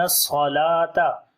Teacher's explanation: صاد کو موٹا پڑھیں گے صفت صفیر بھی ہے سیٹی کی آواز بھی آئے گی